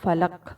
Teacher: قاف کی آواز پلٹ کر واپس آ رہی ہے، تو اسے ہم کہتے ہیں قلقلہ